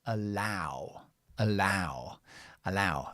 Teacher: we stress the second part of the word, and we have O-W.